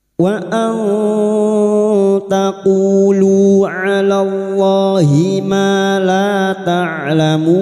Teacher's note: bertemunya mat dengan huruf hidup yang dibaca waqaf mat arid li sukun 4 harokat kita panjangkan